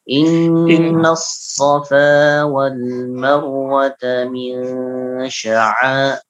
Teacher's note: Inna safa, safa fa-nya 2 harakat.